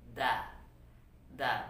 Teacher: Letaknya adalah ujung lidah bertemu dengan akar gigi seri. Da, da. Persis sama letaknya dengan ta. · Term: huruf dal